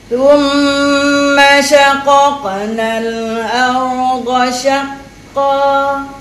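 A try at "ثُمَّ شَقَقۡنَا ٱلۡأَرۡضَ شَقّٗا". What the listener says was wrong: Okey, macam tengok dekat perkataan thumma tha dhammah thu. Kan? Tadi macam tak muncul. Bunyi gitu kan. Jadi kena bagi hak dhammah. Thumma shaqaqna al-ardha shaqqa. Tak boleh muncul dah mula makcik. Makcik kena letak lidah dulu kan.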